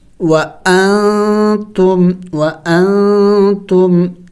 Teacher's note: نون کو آواز ہم چھپائیں گے ناک میں